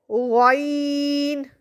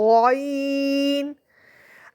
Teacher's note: یہ ادا ہوتا ہے آپ کے حلق کے سب سے اوپر والے حصے سے اور یہ موٹا ہوتا ہے